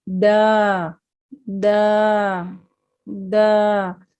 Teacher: دال زبر الف دا، اسے دا دا نہیں پڑھنا، ٹھیک ہے، یہ امالہ نہیں کرنا، اسے معروف پڑھنا ہے